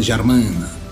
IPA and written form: ʒaɾmɛ̃nǝ (germaine)